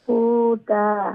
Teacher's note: হু লম্বা হবে, হা ওয়াও পেশ, হু ওয়াও মাদ্দা আছে না